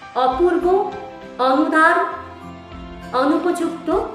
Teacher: হচ্ছে কিন্তু আবার আমরা যদি বলি অপূর্ব অনুদার অনুপযুক্ত এখানে আবার প্রত্যেকটার শুরুতেই যে অ রয়েছে সেটা কিন্তু বিবৃত অ হিসেবে উচ্চারিত হচ্ছে